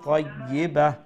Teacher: তো এখানে আমরা স্টপ হয়ে যাব, স্টপ যখন হয়ে যাব তখন এই যে তা আছে তা কিন্তু হয়ে যাব হা হয়ে যাব